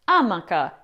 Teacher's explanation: The reason is the word comes from the Spanish amaka which in turn was borrowed from the Caribbean word amaka where the stress falls on the second a. However, some Italians say amaka stressing the first syllable · some Italians say Amaca, stressing the first syllable